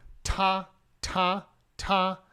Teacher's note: exactly the same there's a t in Chinese it's very aspirated your tongue goes against the back of your front teeth with the T